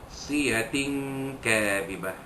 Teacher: Nasiyah ana man asli, siyatin kadhibah, tanwin pada ta marbutah, ta bulat pada nasiyah itu bertemu dengan huruf kaf, maka hukumnya ikhfa hakiki, menyembunyikan bunyi tanwin yang bertemu dengan huruf kaf berserta dengung